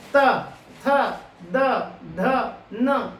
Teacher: अब आप ये आइए नेक्स्ट वाले को देखें, त त द ध न, तो ये कहलाती है दंत्य ध्वनि, क्योंकि जब इसका उच्चारण होगा तब आप देखेंगे जीभ जो है दांत की नोक से टकराती है